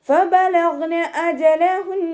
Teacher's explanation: ഫ ലൈറ്റാക്കിയിട്ട് ഉച്ചരിക്കുക. മേലെ മുൻപല്ലിൻ്റെ അറ്റം താഴെ ചുണ്ടിൻ്റെ ഉൾവശത്ത് നനഞ്ഞ ഭാഗത്ത് വെക്കുക. ഗൈൻ ഇസ്തിഅലാൻ്റെ ലെറ്ററാണല്ലോ, ഉയർത്തിയിട്ട് ഉച്ചരിക്കുക കേട്ടോ.